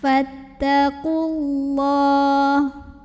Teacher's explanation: Alif lamnya namanya alif lam syamsiyah karena alif lam bertemu dengan huruf syamsiyah yaitu lam. Maka alif lam ini tidak perlu kita baca, ya, lewatin aja atau bacanya diidghamkan ke lam berikutnya